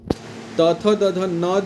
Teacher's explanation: त थ द ध न जो है उसका उच्चारण दंत से करते हैं।